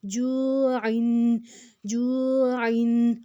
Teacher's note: عین جو ہے وہ حروف ہلکی ہے، اس کو ہم حلق سے نکالیں گے